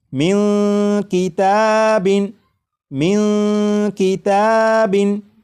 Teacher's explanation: اس نون ساکن کی آواز کو ناک میں چھپا کر غنہ کر کے پڑھیں گے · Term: اخفا